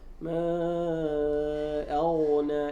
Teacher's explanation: فالغين حرف مفخم بين مرققات، قبلها الهمزة مرققة والكلمة التي قبلها مرققة ما، والنون بعدها مرققة والألف بعد النون مرققة، فالغين إذا منفردة بالتفخيم أصبح ما أغنى، إذا لابد أن يظهر التفخيم.